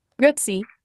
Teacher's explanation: Emphasis on the first syllable and a bit of a rolling R.